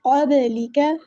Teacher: با پہ قلقلہ کریں گے، آواز جو ہے ہماری آواز میں باؤنسنگ آئے گی، قبلک، آواز پلٹتی ہوئی محسوس ہوگی، اور یہاں پر جو ہے